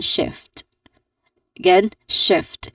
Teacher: Again, shift, which starts with an sh sound or the sh sound, and then followed by a short e vowel sound in the middle, and then it ends with a consonant cluster sound, which are the consonants f and t, which has the sound of ft.